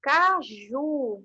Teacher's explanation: caju aqui no caso a última sílaba é a mais forte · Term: oxítona